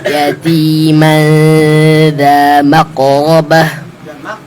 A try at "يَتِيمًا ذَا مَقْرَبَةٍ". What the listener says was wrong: Jangan ada jeda. Langsung masuk. Jangan maqrabah. Jangan ada jeda ya.